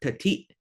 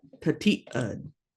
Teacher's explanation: you've got that glottal stop that kind of just sort of abruptly stops the whole word. Tati'. And then you say ud.